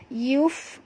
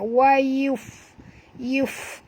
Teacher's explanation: bunyikan hamas pada fa, wa yuf ya, keluar angin ya.